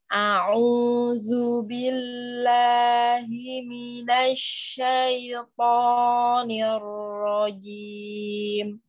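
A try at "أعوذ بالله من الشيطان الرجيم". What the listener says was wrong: Tonya tebelin lagi.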